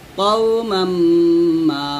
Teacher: কাউ বলা যাবে না, ক বলতে হবে